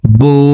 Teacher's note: ঠোঁট গোল করে এক আলিফ টেনে পড়তে হবে।